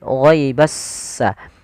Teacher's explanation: Alif lam syamsiyah adalah alif dan lam yang dia ditulis tapi dia tidak dibaca huruf lamnya sehingga langsung diidgamkan ke huruf setelahnya yaitu huruf sin. Sehingga langsung di huruf sinnya bertasydid. · Jadi s-nya seakan-akan ada dua.